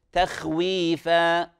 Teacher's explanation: وقد يقرأ البعض بترقيق الخاء لأنها مجاورة للتاء المرققة